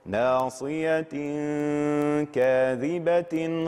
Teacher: الحكم الأول وهو الإخفاء، التنوين بعده الكاف الإخفاء